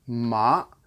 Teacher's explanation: you're starting off the ground level and then you're ramping up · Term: the second tone